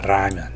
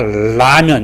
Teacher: 공기가 혀끝 위로 나간 발음이기 때문에 R 발음입니다